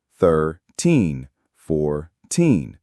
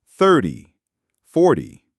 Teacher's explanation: In American English, for the teen numbers, the stress is on teen, 13, 14. For the t numbers, the stress is on the first syllable.